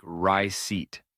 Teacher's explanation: Receipt is another word that doesn't follow the rules you might expect. The P is silent, so it sounds like rye-seat.